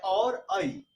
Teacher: ए और ऐ, इसका उच्चारण स्थान जो है कंठ तालु